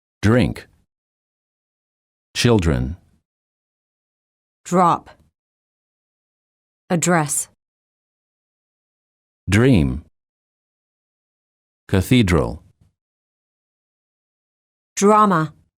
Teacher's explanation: When the D is followed by an R, the D changes and becomes an almost j.